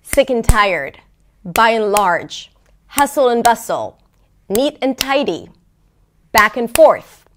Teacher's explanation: both words – both content words, the first and the second word – are somewhat stressed, while the word in the middle is totally reduced